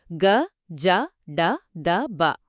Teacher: ఆధారం ప్రకారం తేలికగా పలికే హల్లులు సరళాలు ఆ అక్షరాలు గ జ డ ద బ వీటికి నాదములు అని కూడా పేరు. నాదం అంటే ధ్వని ప్రకంపన అంటే ఇక్కడ స్వరతంత్రులు ప్రకంపిస్తాయన్నమాట